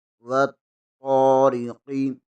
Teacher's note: تو زبر کے آگے المدہ ہے، اسے بھی 1 الف کے برابر کھینچ کر پڑھیں گے۔ را کے نیچے زیر ہے، را کو بریک پڑھیں گے، اور قاف آگے ساکن آ رہا ہے، قاف پر قلقلہ ہوگا۔ یہاں پر را کا خیال رکھنا ہے، کیونکہ را سے پہلے بھی پر لفظ آ رہا ہے اور را کے بعد بھی پر لفظ آ رہا ہے۔